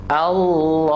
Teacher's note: Right. This who, ha is from the bottom of throat